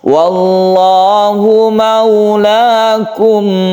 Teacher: Untuk sukun mem kita berhentinya itu jangan terlalu ditekan karena dia mempunyai sifat tawasud yang artinya tengah-tengah. Jadi dia tidak terlalu ditekan, tidak terlalu dilepas.